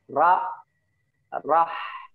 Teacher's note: Ra-nya ditaruh di atas gusi. Rah gitu ya.